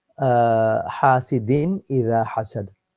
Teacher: So the answer should be, the after tanween there's a letter which is alif, and the alif is a letter of idhar, and due to that the rule of idhar will apply, which is that it will make the din sound, the noon sound in there clear and apparent.